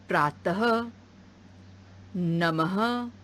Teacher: यह चिन्ह अक्षर के बाद लगाया जाता है। इसे बोलते समय ह जैसी आवाज आती है। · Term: विसर्ग